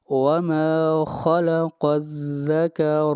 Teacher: را کے اوپر زبر ہے اور را کو موٹا پڑھا جائے گا